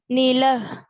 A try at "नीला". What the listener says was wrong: नीला बोल रहे कि लीला बोल रही हो?